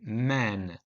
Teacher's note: m in man requires air to flow through the nose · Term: nasal sounds